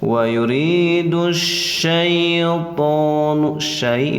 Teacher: Ia sukun sesudah patah, bacaannya di ayun saja, awas jangan dipanjangkan